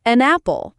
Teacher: The N from an connects to apple.